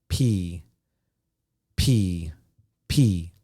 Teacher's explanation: you pop your lips and you pop the air the air is pushing out so air is going out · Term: p sound